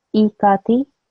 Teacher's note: I have to make sure that this E is not any longer than this ka. So I cannot say E ka. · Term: kasra